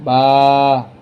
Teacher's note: বার উচ্চারণটা কিভাবে আসে দুই ঠোটের মাঝখান থেকে